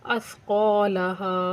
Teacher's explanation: क़ाफ़ को मोटा करके पढ़ेंगे और सा को नरमी से।